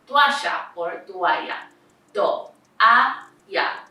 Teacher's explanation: These are two vowels, a and o, that are together but they end up being in different syllables. It's important to remember that the vowels in Spanish are divided into weak and strong vowels. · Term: hiato